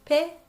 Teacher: a yes sound but there's no yes sound it's pe and you just do it really quick so it's a double sound but there's no little yeah in between